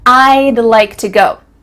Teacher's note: cutting off all the sounds in the word would except for that final D